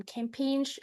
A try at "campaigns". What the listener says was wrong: Campaigns without ch at the end, just campaigns, right?